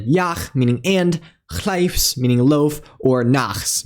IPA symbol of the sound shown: x